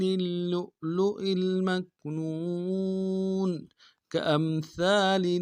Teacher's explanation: یہ حمزہ بشکل واو ہے، حمزہ ہے واو نہیں ہے، جھٹکا دیں گے